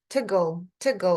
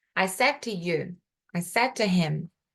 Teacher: Esse T bem suave, bem só de encostar no céu da boca